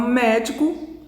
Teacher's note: médico a sílaba tônica é a antepenúltima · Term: proparoxítona